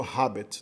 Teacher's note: No latim clássico, provavelmente na época de Júlio César, ainda se pronunciava o H como uma aspirada mesmo